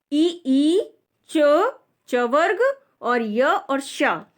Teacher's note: ई च वर्ग, य और श का उच्चारण स्थान तालु है, इसी कारण यह तालव्य भी कहे जाते हैं।